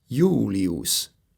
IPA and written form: ˈi̯uːlʲiʊs̠ (Jūlius)